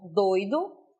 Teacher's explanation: doido aí nesse contexto ocorre um ditongo, não é um hiato que temos nessa palavra